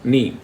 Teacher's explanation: Ni is always stressed. When you say the word Agni, see that where the stress goes, ni. So the ni is udata.